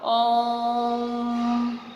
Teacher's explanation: उच्चारण में 3 मात्राओं का समय लगता है